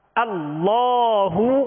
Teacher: حمزہ کی آواز جو ہے ابتدائی حلق سے نکالیں گے